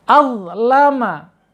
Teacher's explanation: Kemudian azlama, awas, hati-hati ya, jangan sampai ada atau pakai zad atau pakai zal. Ingat pakai dha, pakai ya, pakai dha ya. Lebih tebal daripada zal.